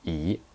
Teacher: when you hear me say 一, I pronounce it as the second tone